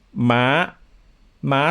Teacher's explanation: starting high and going higher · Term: high tone